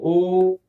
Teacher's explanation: ओ दीर्घ है, देखो ओ ये कंठ और ओष्ठ दोनों से है, कंठोष्ठ।